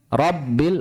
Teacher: Huruf 'r' dibaca penuh, bukan tipis.